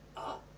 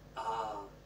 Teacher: pronunciation options with the letter a we have a and ah the sound is the same for both but the length of the sound is what's different · the short a sound is just a burst of sound while the long a sound is a little bit longer